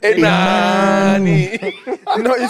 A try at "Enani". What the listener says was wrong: No, you see, it's not if you say it that way, if you say Enani in Ghana, you are trying to say that he's not getting something. Enani. So the tone is important. Enani.